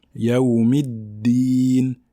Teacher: Si on dit Yawmiddin, ça va ressembler à la lettre ta. Donc là, sur le dal, il n'y a pas d'air qui passe, il n'y a pas de découlement d'air.